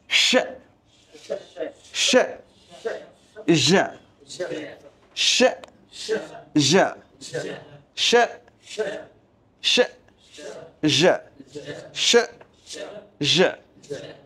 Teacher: এটা ফিল করতে হবে নিজেরটা নিজে জিহ্বার মাঝখান আবার ফিল করি নিজের জিহ্বার মাঝখান তার বরাবর উপরে সব ফেলেইটে স্পর্শ করে উচ্চারিত হয় বা সব ফেলেটের সাথে ঘর্ষণের মাধ্যমে উচ্চারিত হয়